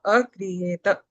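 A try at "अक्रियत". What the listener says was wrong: Akriyata. You have to say a dutva there. Akriyata. Ik plus ra is kri. So you have to say the ik twice. Akriyata.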